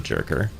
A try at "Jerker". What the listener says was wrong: Well, the lore is actually that it's a Swedish name, like, or I mean, it's not a Swedish name, but it's a Scandinavian name, and it's Swedish people don't pronounce the J like hard J. We go Y with the J's, so it's Jerker is how you pronounce that name. Jerker.